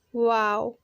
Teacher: वाव दोनों होंठों को गोल करके निकलता है। जिस तरह से इंग्लिश में एक वर्ड आता है ना वाव, जब कुछ अच्छा लगता है तो बोलते हैं ना वाव, उसी तरह से वाव की आवाज़ भी निकलती है।